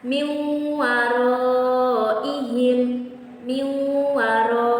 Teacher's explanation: Idgham biguna itu dia memasukkan huruf dengan menggabungkan 2 huruf, dan cara membacanya itu ditasydidkan.